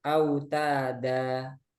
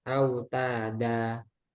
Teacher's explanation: Nah ini kan asalnya itu fathatain eh kemudian ada Alif ya ketika dibaca wakaf ini menjadi autada jadi panjang dua harakat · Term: Mad Iwat